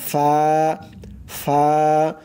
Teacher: এবার চলুন 14 নাম্বারে 14 নাম্বার মাখরাজ হচ্ছে নিচের ঠোঁটের পেট নিচের ঠোঁটের পেট সামনের উপরের দুই দাঁতের আগার সঙ্গে লাগাইয়া